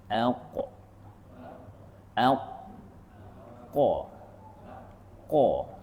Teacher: Kita meninggikan pangkal lidah kita. Jadi pangkal lidah kita diangkat maka dia akan bunyi aq. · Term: huruf qaf